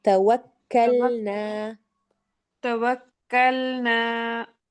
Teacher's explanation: کاف نکالیے، قوف کی طرف نہ جائے